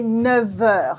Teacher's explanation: so the F sound becomes a V sound